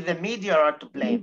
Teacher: هتلاقي نفسك بتزودي ال R ده هي اللي هي intrusive R